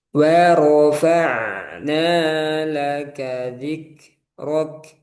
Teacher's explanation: jangan ada alif, jangan ada mad atau panjangnya di ro